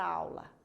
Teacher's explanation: AU é a sílaba mais forte da palavra aula. Portanto, é uma sílaba tônica.